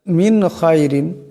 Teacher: হবে আমিত মিন খাইরিন এখানে নুন সাকিন এরপর খা আসছে এই নুন সাকিনকে গুন্না করা যাবে না খা ইজহারের হরফ তাই এখানে বেলাগুন্না পড়তে হবে